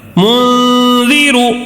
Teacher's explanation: نون کی آواز کو ناک میں چھپا کر، یعنی غنے کے ساتھ پڑھنا ہے، ٹھیک ہے؟ غنہ کر کے پڑھنا ہے.